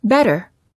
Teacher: you quickly tap the tip of the tongue on the gum Ridge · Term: tapped T